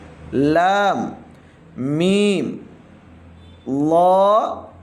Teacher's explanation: லாம் சொல்லக்குள்ள நாக்கு நுனி மேல் முரசுல படணும்